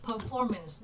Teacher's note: Performance nhấn âm số 2